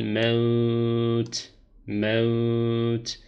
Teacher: Dolayısıyla uzatarak. Yani yavaş okuşta 3 ya da 4 elif miktarına kadar uzatarak okuyoruz.